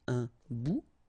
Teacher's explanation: Remember, final T not pronounced.